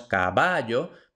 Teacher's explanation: va es la sílaba tónica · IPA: [kaˈβaʝo]